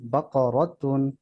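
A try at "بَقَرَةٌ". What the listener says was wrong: বা জবর বা কফ জবর ক বাকা র জবর র বাকরা তা দুই পেশ তুন বাকারাতুন বাকরাতুন বাকরাতুন বাকরাতুন বাকারাতুন বাকরাতুন বাকরাতুন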